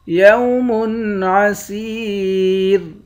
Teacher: آخر میں را ساکن ہے، اس را پر جب وقف کریں گے تو اس را کو باریک پڑھیں گے۔